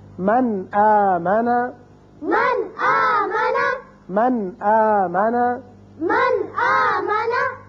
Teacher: اب دیکھیے نون ساکن کے بعد حمزہ آ گیا، لہذا نون کو ظاہر کر کے پڑھیں گے